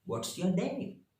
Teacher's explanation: Getting the right intonation is important to convey the right attitude. That is, high start for questions, tentativity, and wide pitch variation to show greater enthusiasm